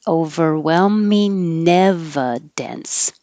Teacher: So instead of the ing, where the back of the tongue usually goes very high to make an ing, it is easier to make a connection if you make an in, overwhelming. And the tongue comes to the front for a regular in, and then it can connect to the E. Overwhelming evidence.